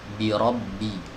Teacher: huruf ba keluar dari dua bibir. Ya, keluar dari dua bibir yang ditempelkan.